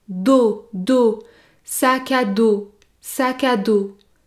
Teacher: la lettre s à la fin du mot sac à dos n'est pas prononcée